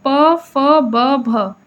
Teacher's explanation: ओष्ठ यानी ओठों से निकलने वाला ध्वनि है